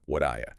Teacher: What do you very often becomes wadaya. That T in what often softens to a D sound, or can even disappear in really quick speech, especially before a vowel sound like the oo in do you.